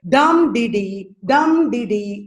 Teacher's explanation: first syllable is stressed second and third syllables are not stressed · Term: dactyl